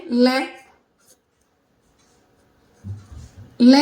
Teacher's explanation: स्थान क्या है दंत है ल जब हम बोलते हैं तो हमारे जीभ का अगला भाग हमारे दातो को क्या करता है स्पर्श करता है